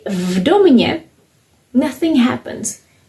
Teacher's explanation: This is v, this is d, v domě, because both d and v are voiced, so there is nothing to be done